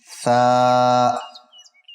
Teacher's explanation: نرمی سے پڑھنا ہے، زبان کی نوک اور اوپر کے 2 دانتوں کے کنارے۔